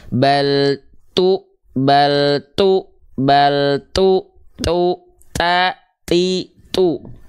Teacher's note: bukan mengalir nafas tapi hanya dipercikkan saja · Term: huruf ta